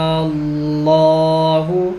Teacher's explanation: کھڑے لفظ اللہ سے پہلے حرف پہ زبر ہے، یعنی کھڑا زبر ہے تو لفظ اللہ کو موٹا بھی کریں گے